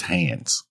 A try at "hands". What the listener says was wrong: the way you're saying it, you're saying hands like you're saying pants. It's not the same thing. Hands like I'm saying pans.